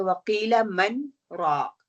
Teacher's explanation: सख्त वाजिब है, और सख्त वाजिब का क्या मतलब है, you have to पोज for a second